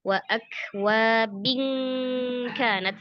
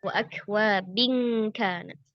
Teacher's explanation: Gunnah tanwin ketemu kaf tuh gunnahnya tipis. Wa akwabin kanat langsung ya, bukan wa akwabin, lidahnya rileks, jangan dibuat mangkok ya, langsung wa akwabin kanat ya.